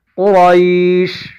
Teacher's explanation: حالت وقف میں ہم شین کو ساکن بنا دیں گے، قرائش، قاف بھی موٹا پڑھا جائے گا، یہ را بھی موٹا پڑھا جائے گا